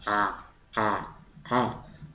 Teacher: es un cierre de la garganta y una explosión de aire Es como si fueras a pronunciar una a pero con la garganta cerrada a a a Okay aí aí es una consonante bueno Y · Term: ain